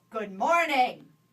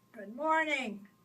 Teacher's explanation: Voice of authority, low and loud